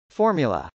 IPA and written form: fˈɔːrmjələ (formula)